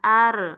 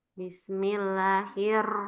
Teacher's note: Ro tidak termasuk huruf qalqalah. Jadi tidak ada pantulannya.